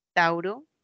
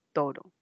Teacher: una palabra como tauro que tenía dos vocales y pasó al Castellano con una sola vocal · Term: monotongación